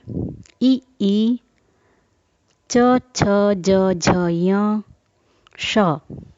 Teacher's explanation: हमारी जिह्वा ऊपर के चिकने भाग यानी तालु को स्पर्श करती है, इसलिए इनका उच्चारण स्थान हुआ तालु। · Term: तालव्य